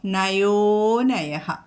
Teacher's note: നയോ പിന്നെ അനയഹ എന്നുള്ള ആ പ്രശ്ലേഷ ചിഹ്നം. അപ്പം ഈ ഓകാരം ഒന്നും കൂടി ഒരു മാത്രം നീട്ടി വീണ്ടും നയഹ എന്ന് ഉച്ചരിക്കാം